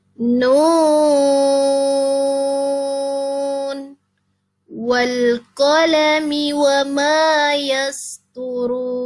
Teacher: Adapun ini huruf nun, nah, ini tidak diidghamkan ke huruf wawu, tetapi dibaca izhar. Menurut Imam Hafs, ya.